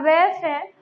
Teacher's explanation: तो वे और फे का जो उच्चारण स्थान होता है वो होता है हमारा दंतोष्ठ। निचले वाले जो निचला होठ और ऊपर वाला क्या है हमारा दांत।